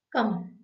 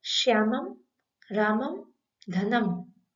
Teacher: अनुस्वार जब शब्द के अंत में आता है तो उच्चारण करते समय दोनों ओष्ठ मिल जाते हैं, अर्थात मुंह बंद हो जाता है।